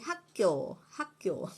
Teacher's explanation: the second consonant is pronounced as if it has been doubled